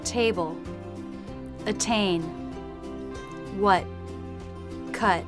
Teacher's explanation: in American English, they tend to drop the T in the final position.